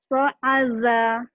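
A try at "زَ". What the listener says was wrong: Za-nya tuh kurang Za. Zaitun. Z. Z ya. Z. Za.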